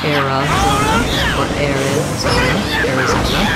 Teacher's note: the stress is on the zone syllable, third syllable. Although this letter AR does say the air good vowel, so again I have a clear vowel there, air, Arizona.